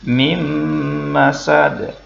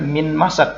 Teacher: Jadi kita baca dengung bukan min masad tetapi mim masad.